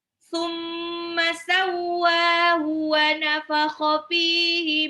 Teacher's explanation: Tsumma, mimnya tasdid itu harus digunah, jadi nggak boleh summa gitu, nggak boleh. Summa dan ma-nya nggak boleh panjang, nggak boleh summa.